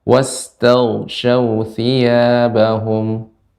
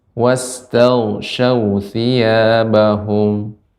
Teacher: sin-nya lebih banyakkan lagi, diperbanyak desisnya atau hamsnya